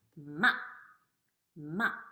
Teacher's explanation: It's a short down sound · the fourth tone is a going down sound